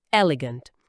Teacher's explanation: A sílaba tônica, a força tá no começo · A principal diferença talvez seja o som do E inicial, que é um pouco mais aberto que o nosso E fechado, sabe? E no final, gant.